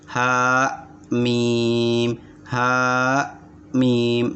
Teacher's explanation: Jadi ada seakan stop di ha-nya